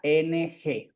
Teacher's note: adquiere un sonido nasal es decir se pronuncia ngg